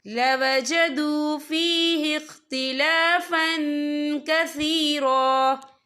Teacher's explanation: یہ دیکھیں لَوَجَدُوا فِيهِ اخْتِلَافًا، فا کے پر تنوین ہے، تنوین کے بعد جو ہے کاف آ رہا ہے، اور کاف جو ہے اکفا کا ورڈ ہے تو ہم یہاں اکفا کریں گے، تنوین کی آواز کو ناک میں چھپائیں گے